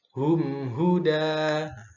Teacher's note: Fathah tanwin diwakafkan itu akan menjadi fathah panjang ya. Jadi dibaca panjang satu ayunan. Jangan terlalu pendek.